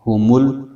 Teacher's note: آگے لام جزم والا حرف ہے، اس کو پیچھے میم سے ملائیں گے